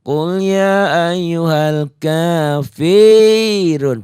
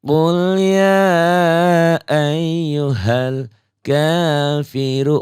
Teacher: Jadi jangan qul ya ayyuhal kafirun. Fi-nya jangan panjang, Fi-nya pendek, kosar. Tidak dipanjangkan, satu ketukan. Qul ya ayyuhal kafiru, ru-nya mad tobi, ini doma dengan waw mati.